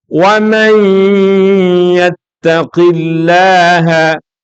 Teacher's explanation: Nunnya hilang, masuk kepada ya. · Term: idgham bi gunnah